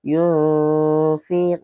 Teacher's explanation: berarti dia yun dengung dan mengarah ke huruf fa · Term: ikhfa